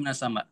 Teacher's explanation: Hamzah itu sifatnya syiddah. Syiddah itu tertahan.